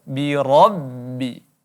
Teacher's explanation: ra di sini ra yang berbaris fathah, maka hukumnya tafkhim ataupun kita baca tebal.